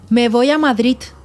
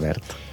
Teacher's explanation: Ensordim. És a dir, la D final la fem T perquè el caràcter sonor li llevem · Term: Ensordir